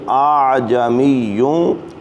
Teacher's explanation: تسہیل کے معنی ہے نرمی کرنا، یعنی 2 بار حمزہ لکھا گیا، حمزہ زبر آ، حمزہ عین زبر آ، پہلا کلمہ جو جہاں تسہیل لکھا ہے تو وہاں آپ نے دوسرا جو حمزہ ہے اس کو اس طرح نرمی سے ادا کرنا ہے کہ وہ ایسے محسوس ہوگا جیسے آپ نے ایک ہی پڑھا ہے، تو وہاں آپ نے اس کو نرمی سے پڑھنا ہے۔